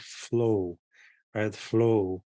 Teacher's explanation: to say it sort of slowly or that oh that that sort of closed off but long o